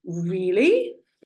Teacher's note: I am indicating surprise by the change in pitch